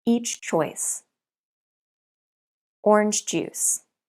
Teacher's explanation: we don't link CH and J sounds · In these examples, you can't link the two consonant sounds. You have to pronounce two sounds. Try to pronounce the second sound immediately after you release the first sound.